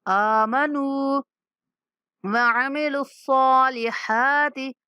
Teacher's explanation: زین، إلا الذین آمنو، نون کے بعد واو مدہ ہے تو ہم نے نون کو لمبا کرنا ہے۔